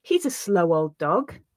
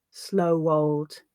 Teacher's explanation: that W sound does sometimes come through where there's a letter W at the end of a word in connected speech, where the word is followed by a vowel sound.